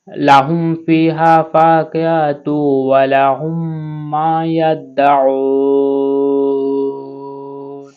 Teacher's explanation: এখানে আর দি সাকিন করতে হবে। আইনটা হলকের মধ্যখান থেকে পড়তে হবে।